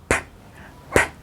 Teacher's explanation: Este sonido no usa las cuerdas vocales como tal, sino que es un sonido sin voz. Entonces solo expulsa el aire.